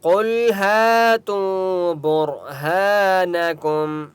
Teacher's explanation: قاف مستعلیہ میں سے اس لیے قاف کو موٹا پڑھیں گے، لام کے پر سکون ہے، قاف کو لام کے ساتھ ملائیں گے۔